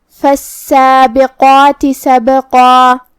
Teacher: حرف القاف ہے اور اس کے بعد مد الف ہے تو ہمیں یہ دونوں حرف کو موٹی آواز میں ادا کرنا ہے